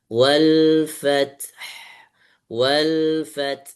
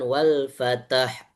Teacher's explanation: Kemudian ketika waqaf terakhir ada dua hamas yang ketemu huruf ta dengan ha sama-sama punya anginnya. Wal fath wal fath bukan qalqalah jadinya bukan wal fatah bukan wal fath diulangi.